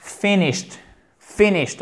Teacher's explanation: accent tonique sur la première syllabe